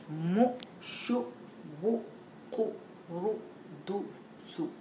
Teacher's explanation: The teacher should see that the students' lips are rounded and protruding when reading 2 and 3 dhamma sounds joined together.